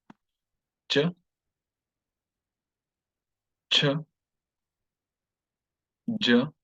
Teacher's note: the tongue is touching this particular point, the point just behind the upper teeth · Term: palatal